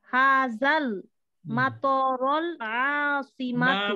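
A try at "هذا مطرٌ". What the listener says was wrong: না না না না, হাজাল মাতারাল না, হাজা মাতরুল, মাতরুল। পরের লাইন হবে, আমি বুঝতে পেরেছি, হাজা মাতরুল। এটা হাজার পরে আমি বলেছি না পেশ হবে, পরে নাউনটা মাতরুল আসিমাতি, মাতর মানে বিমানবন্দর, আসিমাতি মানে রাজধানী, এটা রাজধানীর বিমানবন্দর।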